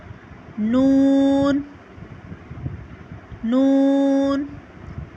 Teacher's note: जुबान का किनारा और दांतों की जड़ से नून अदा होता है · زبان کا کنارہ اور دانتوں کی جڑ سے نون ادا ہوتا ہے